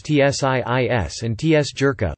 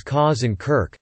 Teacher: When followed by some vowels, the Germanic k softened to a ch sound.